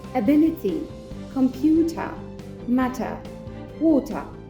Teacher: ولكن في البريتش accent بنعمل stress على حرف ال T